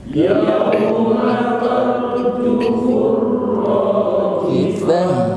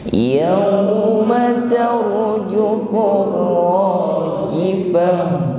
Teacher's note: Rajifatu maka dibaca waqaf di akhir ayat, maka rajifatu yang sebelumnya dibaca ta marbutah maka berubah menjadi ha. Nggih, rajifah maka terasa sampai pada makhraj aqsal halqi, tenggorokan paling bawah, yaitu makhrajnya ha. Rajifah fa, bukan rajifah ya, seolah-olah haknya tidak terbaca.